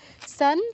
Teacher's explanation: তো আমরা এখানে সান বলবো নাসিকা প্রয়োগ করতে হবে